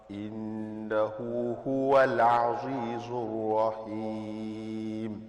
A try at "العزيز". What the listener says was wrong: Send the zay. إنه هو العزيز الرحيم. No, a little thinner. If you can just look at me. عزيز.